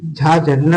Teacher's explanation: वो तालव्य और महाप्राण और घोष व्यंजन का उदाहरण है